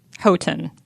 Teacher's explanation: Like the stress is on the first syllable.